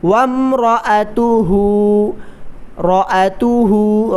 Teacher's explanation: را کو موٹا کریں، را پر زبر ہے